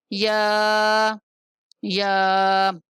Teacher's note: وسط زبان اور بالمقابل تالو یا کا مخرج ہے